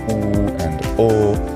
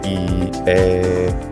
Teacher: in certain vowels like oo and o, the lips are rounded, but in other vowels like e, a, those vowels are unrounded